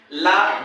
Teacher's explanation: ला दंत मूल और मसूड़ों से उच्चारित होता है